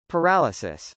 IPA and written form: pɚˈæləsəs (paralysis)